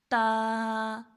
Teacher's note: تا کو کرنا ہے 3 الف لمبا، اور تا کا مخرج ہے زبان کی نوک اور ثنائے علیہ کی جڑ، یعنی جو اوپر والے سامنے کے 2 دانت ہوتے ہیں اوپر والے، ان کو ہم لوگ کہتے ہیں ثنائے علیہ، اور جو نیچے والے ہیں ان کو کہتے ہیں ثنائے سفلی.